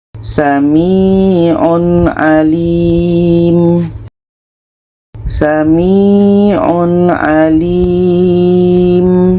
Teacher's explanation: Tanwin jelas, ain jelas, dan tidak ada dengung. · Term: izhar halki